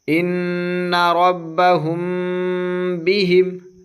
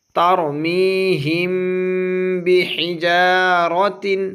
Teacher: میم ساکن کے بعد با آیا، اس لیے اخفا ہوگا، اخفاء شفوی کہہ دے اس کو۔ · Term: اخفائے شفوی